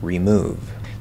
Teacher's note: don't normally use so it's absolutely 100 possible to say remove the stress is still on that second syllable and that re is super super short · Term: fully enunciated version